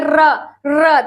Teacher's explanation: जैसे आप बोलिए र तो देखिए क्या होता है, र में देखिए कंपन होता है, तो इसलिए इसका नाम लुंठित या प्रकंपित व्यंजन रखा गया है